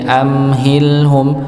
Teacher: mim sukun ada sedikit dengung. Masih ada dengungnya sedikit masih ada mengalir sedikit